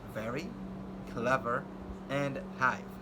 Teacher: V, which is a voiced labiodental fricative sound, as in the words very, clever, and hive.